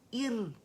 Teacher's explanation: اب یہ موٹی نہیں پڑھیں گے، ار ہوگا، یہ باریک پڑی جائے گی کیونکہ یہ حمزہ قطع ہے اور یہ حمزۃ الوصل ہے.